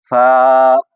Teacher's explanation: اوپر والے دانتوں کے کنارے اور نیچے والے ہونٹوں کے تری والے حصے سے یہ فا ادا ہوتا ہے